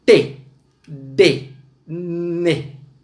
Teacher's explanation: A língua encosta nos dentes · T, D, N são fonemas oclusivos linguodentais